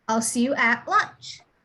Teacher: So you would not pronounce the T, you would just say at.